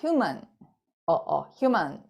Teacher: 강세 있는 부분은 음절이 살아있지만 나머지 부분들에 대해서는 거의 대부분이 스왓 사운드로 넘어가요